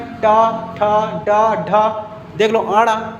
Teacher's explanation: सभी हमारे जीभ पलट रहे हैं मूर्धा की तरफ, इसीलिए इसे मूर्धा कहा जाता है। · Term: मूर्धन्य